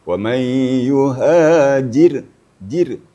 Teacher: Di awal ayat tadi wa may yuhajir. Roh apabila sukun atau mati dan sebelumnya baris di bawah jir, maka roh itu tipis, lebih tipis.